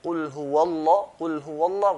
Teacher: Sometimes pronounced with heaviness, full mouth. Other times pronounced lightly, with empty mouth.